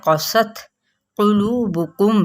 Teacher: قاف کو پر پڑھنا ہے، تا پہ ہمس ہوگا